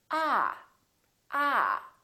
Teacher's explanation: your tongue touch your bottom teeth like this ah ah and this vowel is usually longer than most people who are non-native speakers tend to make it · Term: ah sound